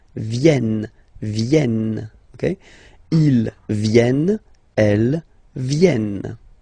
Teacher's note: this classic ending ENT for the third person of the plural is here, but phonetically it doesn't exist, so you don't pronounce it.